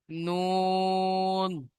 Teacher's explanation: 9 নম্বর মাখরাজ, জিভের আগা এবং তার বরাবর উপরের তালুর সাথে লাগিয়ে উচ্চারিত হয়